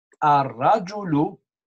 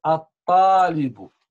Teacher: Lam Shamsiya where we write L, we don't say L, we say A. Lam is silent, okay?